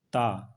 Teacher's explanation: दंत उच्चारण स्थान है ऊपरी दांतों के निकट से